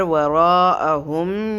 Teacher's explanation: را کو پر کرتے ہوئے 4 سیکنڈ تک ہم نے اس کو پڑھنا ہے